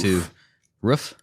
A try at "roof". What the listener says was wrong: No, roof. It's roof. It's not rough.